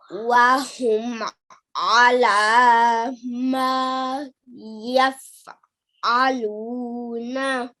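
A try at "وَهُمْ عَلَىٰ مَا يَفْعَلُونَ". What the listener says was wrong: Beautiful. Well done. Excellent.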